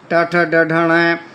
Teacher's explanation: इनका उच्चारण स्थान मूर्धा के स्थान से होता है।